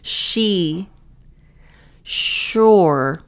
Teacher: So here, the S sounds like a sh. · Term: sh sound